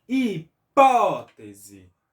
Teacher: Então, SE é a última, TE a penúltima, PO a antepenúltima. Então, o PO é a antepenúltima e é a sílaba tônica, né? Que nós pronunciamos com mais força. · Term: proparoxítona